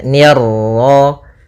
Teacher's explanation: Ni tipis ketemu ro yang ro tafkhim. Ro tebal maka nirro.